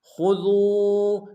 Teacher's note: خا کو موٹا ادا کریں گے، دال کو واو کے سامنے آئیں گے، واو مدہ ایک امتداد میں کھینچیں گے